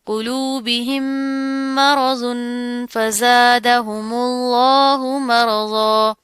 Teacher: تنوین آ رہی ہے، اس کے بعد کیا ہے، فا آ رہا ہے، تو یہاں پر ہم اخفا کریں گے